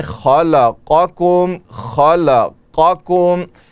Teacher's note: خا کی تفخیم اور قاف کی تفخیم دونوں ادا کی جائے، ان کو پر پڑھا جائے، منہ بھر کے پڑھا جائے، لیکن کاف پر اس کا اثر نہ پڑے، کاف باریک پڑھا جائے.